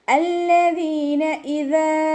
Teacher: ഇവിടെ ഹംസത്തുൽ വസ്ലിന് ശേഷം ലാമ് വന്നതുകൊണ്ട് ഹംസത്തുൽ വസ്ലിൻ്റെ ഹർക്കത്ത് ഫതഹ കൊടുത്തിട്ട് ഉച്ചരിക്കുക കേട്ടോ. ദാലിന് ശേഷം യാമദ് വന്നിട്ടുണ്ട്, 2 കൗണ്ട് നീട്ടിക്കൊടുക്കുക